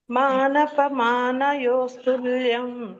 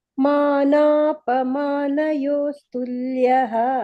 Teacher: ಮಾನ ದೀರ್ಘ ಬರ್ಬೇಕು, ತುಲ್ಯ ಸ್ತುಲ್ಯ ಹಕಾರ ಬರ್ಬೇಕು